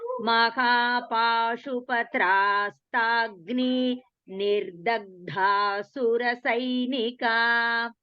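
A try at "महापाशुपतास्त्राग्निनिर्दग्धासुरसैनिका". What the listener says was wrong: So there is no pause after Pashupatastragni. You have to chant this completely. So just remember, in case if you are not able to chant it in one breath.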